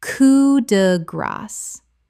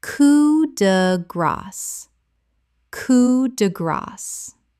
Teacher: The S at the end is actually pronounced in this French phrase because it ends the phrase.